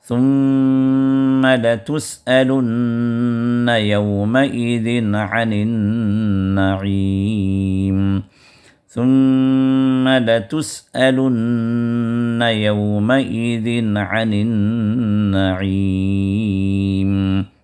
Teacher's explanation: یومئذ عن میں اظہار ہے، تو لہٰذا وہاں پر نون کو ظاہر کر کے پڑھیں گے.